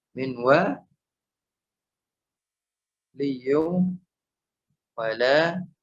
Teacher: Ya, dikatakan dia idgham naqis. Masih terbaca nunnya dan tidak sempurna masuk ke huruf wa.